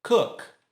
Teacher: Termina com K, sem voz.